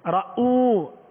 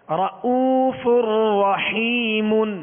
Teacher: رؤ حمزہ کا جو جھٹکا ہے یہ کامل رہے گا. رؤ رؤوف نہیں پڑھیں گے.